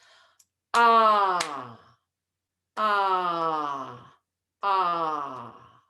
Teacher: the long vowel is twice as long